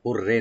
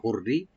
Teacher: রাকে একটু আপনারা লাইট করে পড়বেন, খুব পাতলা করে। হুররে না, হুররি।